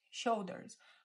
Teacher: o L, a gente respeita esse L, não U.